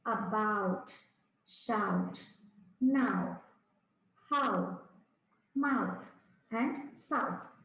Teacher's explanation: Begin with a and end in u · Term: ow sound